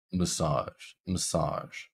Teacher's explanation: Sage is our stressed syllable. So even though we have an A in our word massage, it is still pronounced with the schwa